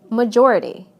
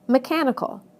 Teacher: Listen to how the stress moves right to the syllable immediately before the suffix. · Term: word stress